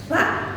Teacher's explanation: Pengucapan tsa desisnya hanya sedikit dan banyak udara yang keluar. Tsa, maka huruf s-nya desisnya tidak begitu jelas. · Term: huruf keempat adalah tsa